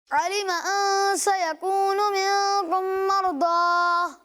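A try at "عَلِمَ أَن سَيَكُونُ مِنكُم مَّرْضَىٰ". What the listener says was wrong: اچھی کوشش کی آپ نے, لیکن ابھی بھی آپ نے غنہ کی مقدار پوری نہیں کی, ٹھیک ہے. منکم مرضی, ٹھیک ہے. اس طرح آپ نے غنہ کی مقدار پوری کرنی ہے.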